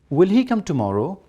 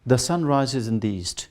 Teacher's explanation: when you want to use a tone for question form it must be the rising tone in statement it is falling